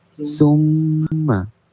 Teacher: Hendaklah dibaca wajib dengung dua harokat. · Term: wajibul gunnah